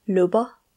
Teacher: when it is the last letter of a word, this deep A is short, like a short schwa. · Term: short R